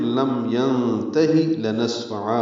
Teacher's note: لام کو جلدی پڑھیں گے، سین ساکن پہ ہمس ہے